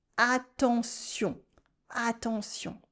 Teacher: Here we have two nasal sounds, on and on.